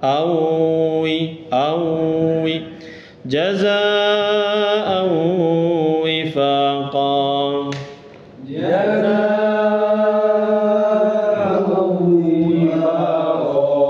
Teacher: Tanwin ketemu wawu, idgham bi gunnah. Dileburkan, masukkan ke wawunya. Wawunya ada tasdid kalau dimusab kemenak dimudahkan karena memang bacanya juga gitu, dimasukkan ke wawunya, ditahan sebentar.